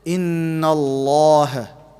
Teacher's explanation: If it's got a fatha, it will be heavy. So we pronounce it Inna Allah. Take your tongue up. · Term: the lam will be heavy